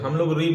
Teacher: अगर ऋ आप उच्चारण करते हैं बेटा तो र के साथ में ई ऐसा नहीं लग रहा आपको कि ऋ बोल रहे हैं तो र के साथ में इ